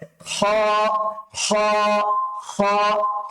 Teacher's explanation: হ উচ্চারণ করার সময় আমাদের কণ্ঠনালীর শেষের কাছে ফিরে যেতে হবে